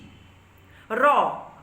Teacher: হচ্ছে রনিত শব্দের অর্থই হচ্ছে কম্পিত হওয়া কম্পিত হচ্ছে যে কারণে এই র ব্যঞ্জন ধ্বনিটিকে বলা হচ্ছে রনিত ব্যঞ্জন বা কম্পিত ব্যঞ্জন